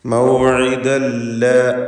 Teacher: മൗഇദൻ എന്നതിലെ തൻവീൻ ശേഷമുള്ള ലാമിൽ പൂർണ്ണമായും ലയിപ്പിച്ച് മണിക്കാതെ ഉച്ചരിക്കണം. ഇത് ബിഗൈരി ഗുന്ന.